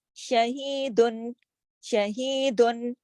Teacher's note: یہاں پہ میں نے نہ اخفا کیا نہ غنہ کیا